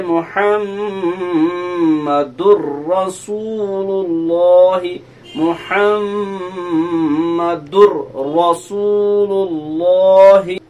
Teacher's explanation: اسی کو کہا جاتا ہے ادغام تام، یعنی پورا کا پورا نون داخل ہوا، پوری کی پوری تنوین کی ساؤنڈ داخل ہو گئی را میں، اسی لیے ہم اس کو ادغام بلا غنہ بھی کہتے ہیں، اس میں غنہ نہیں ہوتا ہے۔